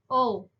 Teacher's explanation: तो जो ओकार है इस वर्ण का उच्चारण स्थान कंठ ओष्ठ है। जैसे हम बोलते हैं ओ, तो कंठ और ओष्ठ दोनों होएगा इसका उच्चारण स्थान, ऑप्शन नंबर सी इसका आंसर सही है।